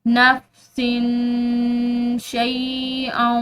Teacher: سین کی جو تنوین ہے اس کے بعد شین یعنی کہ حروف اخفاء میں سے ایک حرف ہے تو اس پر جو ہے ہم نے اخفاء کرنا ہے